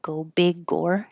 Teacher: So this G will connect to the O.